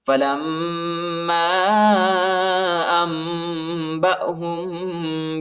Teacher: لام کو میم کے ساتھ ملائیں گے اور غنہ کریں گے. الف پر چھوٹا مد آیا ہے، اس کو تقریباً 2-3 سیکنڈ تک کھینچنا ہے.